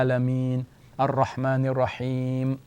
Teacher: we do not pronounce the final vowel